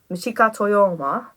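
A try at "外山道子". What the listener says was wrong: Exactly, the classic way to pronounce most names from that part of the world is you put the family name first and then the individual's name afterwards. So it's Toyama Michiko.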